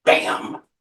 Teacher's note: Two lips come together to pronounce it in what's called a plosive.